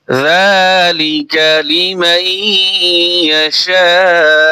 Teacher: এখানে চার আলিফ টান দিয়ে শক্ত করে দিবেন তাহলেই হামজার উচ্চারণ এসে যাবে